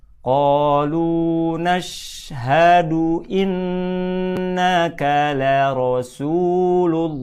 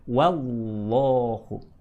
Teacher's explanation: Ingat kaidah tajwidnya, lafaz Allah apabila didahului oleh tanda dhammah, oleh harokat dhammah atau harokat fathah, maka lafaz Allahnya mesti dibaca tebal, alias tafkhim, mendekati suara o